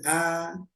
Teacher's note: kalau vokal a plong kebuka seluruhnya